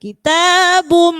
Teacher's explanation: Ada idgham bi gunnah, maka dibaca dengung.